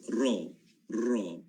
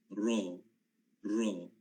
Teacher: Kita punya lidah kita naik ke atas dan dia kena bahagian gusi hadapan. Ra. Kalau tak kena, tak sampai dia punya taraf dia lagi. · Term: huruf ra